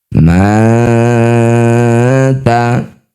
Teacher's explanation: Nun sukun bertemu ta disebut bacaan namanya ikhfa aqrab. Bunyi nun dengungkan dua harakat. Lisannya sudah bersiap bunyikan ta.